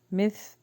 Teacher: ثا کے مخرج کو سافٹ پڑھیں گے، مس نہیں پڑھیں گے